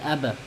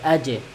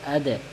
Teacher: قلقلہ کے حروف کے اوپر ساکن آ جائے تو ہم وہاں پر ہلکا سا جھٹکا دے کر پڑھیں گے